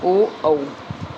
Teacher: वे स्वर जिनका उच्चारण कंठ व होठ दोनों की सहायता से होता हो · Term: कंठोष्ठ